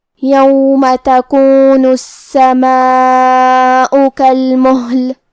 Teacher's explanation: کلمت کالمہل یہاں ہا ساکن ہے، لہذا ہمیں ہا کو ظاہر کرنا ہے. ہا کی ادائیگی حلق کے نیچے والے حصے سے ہے۔